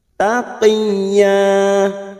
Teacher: ya yang bertasdid tanpa ditekan lama-lama hanya masuk taqi taqiyah ya fathah tanwin yang dibaca waqaf namanya Mad iwad dua harakat atau dua ketuk kita panjangkan